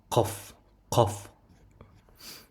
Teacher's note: Qof tovushining maxraji tilining ortqi tarafi bilan ortqi tanglayning orasidan chiqadi.